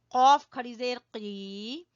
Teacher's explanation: कौफ कौफ जबान की जड़ से कौफ